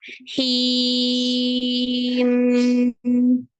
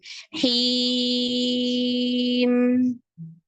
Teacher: kalau yang tawasud hanya sampai nutup lalu ngalir hidung